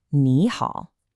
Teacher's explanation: Ni is third tone, ha is third tone, but you never say them that way. The first one changes to a rising second tone, so it becomes ni hao. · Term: tone sandi